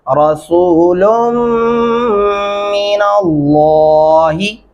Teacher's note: लाम को मोटा करके पढ़ना है